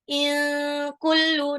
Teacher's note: nun sukun ketemu kaf, ikfa, jadi bacanya agak ditahan